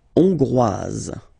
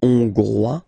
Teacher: final S not pronounced for the masculine form, and then you pronounce it here for the feminine form.